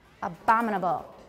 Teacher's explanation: On bom, because it's the stressed syllable.